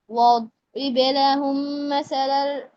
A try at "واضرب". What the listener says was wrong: দদকে শুনেন ভাই, দদকে হ্যাভি করতে হবে, আবার হচ্ছে আওয়াজ বন্ধ করা যাবে না। ওয়াদ ওয়াদ ওয়াদরিব লাহুম, ওয়াদরিব লাহুম।